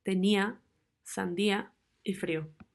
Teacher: una cerrada tónica más un abierto